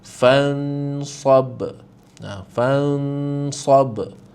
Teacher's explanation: Jadi rujuk balik pada kalimah kita tadi tu fansab. Jadi nun kat sini kita kena sembunyikan dia dengan dengung. Jadi kita samar-samarkan bunyi nun tu. Tak perlu jelaskan bunyi nun. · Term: ikhfa hakiki